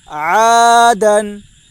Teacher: الف مدہ کو ایک الف کے برابر کھینچ کر پڑھیں